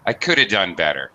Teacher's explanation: But when it's followed by a consonant, it actually gets reduced. The have, okay, would actually probably be reduced to just a schwa sound.